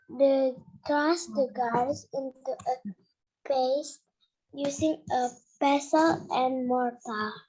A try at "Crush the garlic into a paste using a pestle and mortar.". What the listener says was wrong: Perfect ya.